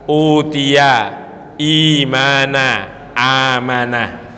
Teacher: mad badal ini bacaannya dua harakat atau satu Alif